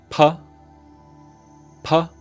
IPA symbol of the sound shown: p